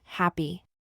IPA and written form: ˈhæpi (Happy)